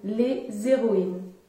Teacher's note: Il faut effectuer la liaison entre les et le mot héroïne.